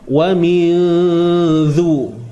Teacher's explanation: Huruf zal keluar hujung lidah tu. Usahlah keluar semua lidah.